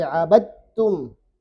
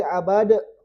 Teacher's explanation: Dal dengan ta tuh sama tempatnya, pangkal gigi seri atas, ujung lidah pangkal gigi seri atas. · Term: idgham mutajanisain